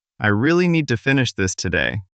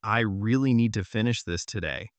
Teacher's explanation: Those words carry most of the message. Smaller grammar words like to and this may sound lighter and quicker. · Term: stress